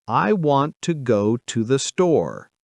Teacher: The main words want, go, and store are stressed. The others are lighter and faster. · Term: stress timed rhythm